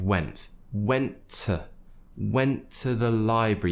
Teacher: we're not pronouncing the T at the end of went went went to the library that's because went finishes with a